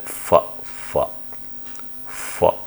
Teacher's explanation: you have a narrow slit or narrow opening at the lips the lips tries to close that